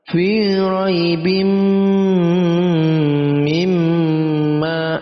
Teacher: Tanwin bertemu dengan mim, idgham itu dimasukkan, tanwin kita masukkan ke dalam huruf mim, lalu kita gunnah, kita dengungkan. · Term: idgham bi gunnah